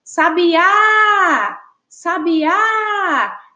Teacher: a gente percebe aí que o A, a Pro até colocou em destaque, ele tem uma entonação mais forte, a gente fala de uma forma mais forte. Então, por isso que a gente identifica aí, ó, na palavra sabiá, a sílaba formada aí pela letra A, com acento agudo, como a sílaba tônica.